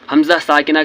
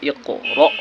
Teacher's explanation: حمزہ ساکنہ جب ہو، یعنی الف پر اگر جزم ہو تو یہ حمزہ ساکنہ ہو گیا اور اس کے پڑھنے میں جھٹکا ہوتا ہے، جیسے اقرأ۔